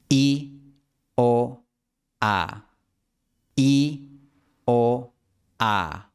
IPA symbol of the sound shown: i o a